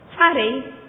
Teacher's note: Farei perde o Z porque ninguém fala fazrei